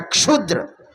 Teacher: क का उच्चारण स्थान है कंठ और मूर्धन्य श का उच्चारण स्थान है मूर्धा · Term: संयुक्ताक्षर